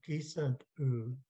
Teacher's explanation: Notice whenever we pronounce any of these, we're blending them together. So we don't say gisant, then do a pause, and then say ooh. We just say it all in one, gisant ooh.